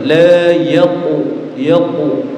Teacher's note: qof itu kalau sukun memantul dan pantulannya tetap karena Q itu termasuk dari huruf yang harus dibaca tebal ketika dia sukun juga tetap harus menambal la yaqu yaqu ulangi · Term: qalqalnya huruf qof